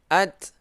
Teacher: hurufnya hamas, ada angin sedikit.